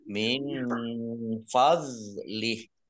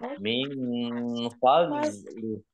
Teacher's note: Jangan dibaca fadlih ya, dok sukun bukan qalqalah. Ya, tidak dipantulkan.